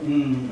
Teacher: And if it doesn't, it allows some of the air to go through the nose, in which case we get a nasal sound like mm